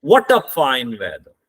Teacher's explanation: व्हाट आपने stress देके बोला, वेदर तक आते हुए आपकी टोन गिर जाती है. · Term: फॉलिंग टोन